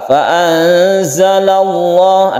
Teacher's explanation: lamnya disebut lam jalalah dan dibaca tafkhim atau tebal karena sebelumnya ada fathah